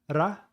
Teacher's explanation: in Japanese the R sound is hard it's almost like an R before a d